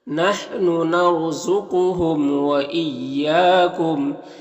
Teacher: इया में अलिफ मद्दा है तो एक अलिफ के बराबर खींचेंगे · را ساکن سے پہلے نون کے اوپر زبر ہے تو را کو پر پڑھیں گے۔ قاف حروف مستعلیہ میں سے پر پڑھیں گے، میم میں اظہار شفع بھی ہوگا۔ · ایا میں الف مدہ ہے تو 1 الف کے برابر کھینچیں گے